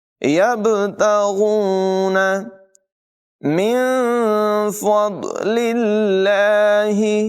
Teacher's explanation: نون ساکن میں اخفا ہوگا، غنہ کر کے پڑھیں گے · غین حلق کے اوپر والے حصے سے ادا کریں گے، اس کی آواز بھی موٹی ہوگی، پر ہوگی